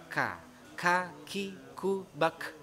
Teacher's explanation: Kaf ini huruf hamas, ada udara yang keluar.